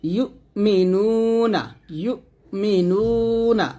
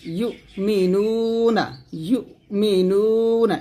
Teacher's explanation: নু টান দেবেন 1 আলিফ